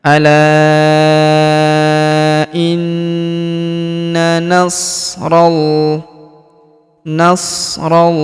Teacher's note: huruf na kita tahan dan kita tekan. Serta kita dengungkan dua sampai harakat karena terdapat tanda tasdid di atasnya.